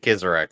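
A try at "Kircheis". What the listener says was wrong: Kirches. That's how I pronounce it. I mean, I may be proven wrong, but I'm pretty fucking sure. Pretty fucking sure there's not a Z in his name anywhere.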